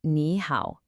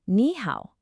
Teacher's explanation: So to make it sound smoother, the first word naturally changes into a rising unsure tone. So you don't say nihow, you say nihow.